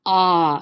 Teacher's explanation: long a is going to be more of an ah sound